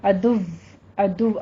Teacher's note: اگر آپ وقف کرتے ہیں تو پھر ادو واو کے اوپر تشدید کے ساتھ آپ تھوڑی سختی کے ساتھ وقف کریں گے. ادو واو کے اوپر ہون کول کر لیجئے اور تشدید کے ساتھ سختی کرنی ہے.